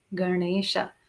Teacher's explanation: tongue is touching the palate for a Ganesha. It's not to the front, it's right at the back.